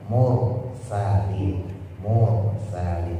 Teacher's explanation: ro sukun jatuh setelah domah. Dibaca tafkhim tebal.